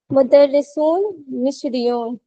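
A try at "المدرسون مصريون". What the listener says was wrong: देखें शुरू से, वर्ड जो है वो अल से शुरू हो रहा है। अल मुदर्रिसून, मारिया। अल मुदर्रिसू मिस्रियून।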